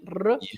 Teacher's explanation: We have the strong R. Here in Central Portugal, we pronounce it with our tongue as r, the tongue with vibration.